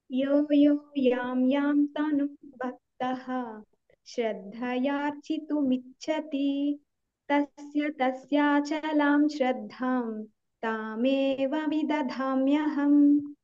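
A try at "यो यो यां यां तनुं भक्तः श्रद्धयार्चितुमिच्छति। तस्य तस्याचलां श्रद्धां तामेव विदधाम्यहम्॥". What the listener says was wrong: కొంచెం స్లో అయిపో కొంచెం ఫాస్ట్ ఒక వన్ సెకండ్ ఫాస్ట్ ఉంటావు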